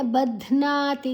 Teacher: ಧ್ ಮಹಾಪ್ರಾಣ ನಾ ದೀರ್ಘ